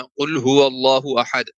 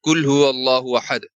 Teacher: مخارج کے اعتبار سے ایک حرف کو دوسرے حرف سے بدل دینا، جیسے قاف کی جگہ پہ کاف کو پڑھ دینا